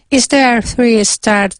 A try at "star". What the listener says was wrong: star? Star. You're saying start. Star.